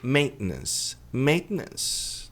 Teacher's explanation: Esse T pode ser engolido.